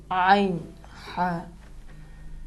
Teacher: حلق کے درمیانی حصے سے پریشر لگا کے، زور لگا کے ان حروف کو ادا کریں گے۔ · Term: عین اور حا